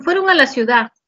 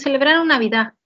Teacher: no todas las personas pronuncian esa D final